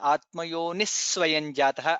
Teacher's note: Visarga followed by Sakara, Atmayonis Swayan Jataha, additional Sakara comes there